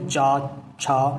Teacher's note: तालव्य माने जो गले के जो मुंह के अंदर ऊपर का हिस्सा होता है उसमें पिछले भाग से ये बोले जाते हैं जैसे च आप बोल कर देखो च छ तो ऊपर लगेगी जीभ लेकिन पिछले भाग पे लगेगी